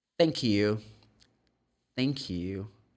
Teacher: You're going to place the tongue between the teeth. Look. But voiceless, I do not vibrate the vocal cords. I'm going to try to blow the air.